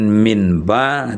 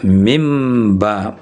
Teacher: maka bunyi nun sukun itu ditukar dengan bunyi mim sukun. Berarti bukan min ba, tetapi adalah mim ba. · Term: iqlab